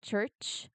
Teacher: Now, a good way to visualize this is to think of it as a stop friction sound. You stop the air and then release it with friction.